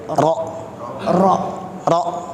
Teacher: Takrir atau bergetarnya huruf ro itu marratan wahidah. Hanya sekali saja getaran, jangan lebih dari 2 kali.